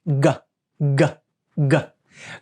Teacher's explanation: G happens when we take the back part of the tongue and we put it against the roof of the mouth.